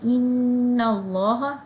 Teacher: اسی طرح اب یہاں ہم لوگ نون مشدد کا غنہ کریں گے. لفظ جلالہ اللہ سے پہلے فتحہ آ رہا ہے تو ہم اس کو مفخم پڑھیں گے